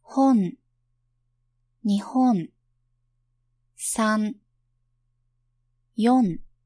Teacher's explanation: Uvular consonants are articulated with the back of the tongue against the uvula. Japanese has one consonant as such, which is a uvular nasal. It only occurs at the end of a word.